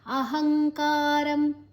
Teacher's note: ಅಹಂಕಾರಂ ಬಲಂದರ್ಪಂ ಕಾಮಂ ಕ್ರೋಧಂಚ ಸಂಶ್ರಿತಾಃ ಮಾಮಾತ್ಮಪರದೇಹೇಷು ಪ್ರದ್ವಿಷಂತೋಭ್ಯಸೂಯಕಾಃ. ಅಹಂಕಾರಂ ಅಹ ಆದ ನಂತರ ಅನುಸ್ವರದ ಉಚ್ಚಾರಣೆ ಂಗ್, ಮುಂದಿನ ಅಕ್ಷರ ಕ ಇದೆ.